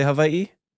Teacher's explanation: you have the okina, the glottal stop between the two I's. It looks like in a backwards apostrophe.